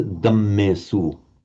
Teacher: They keep it as a D, but they drop the aspiration, so it becomes a dammesu.